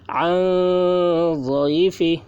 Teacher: نون ساکن کے بعد حروف اخفا میں سے ضاد آ رہا ہے، اس لیے نون کی آواز کو ناک میں چھپا کر پڑھیں گے، اس کو اخفا کہتے ہیں۔